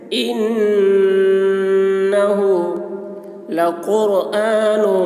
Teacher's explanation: نون مشدد ہے، نون میں غنہ ہوگا، یعنی نون کی آواز کو ناک میں لے جا کر گنگنائیں گے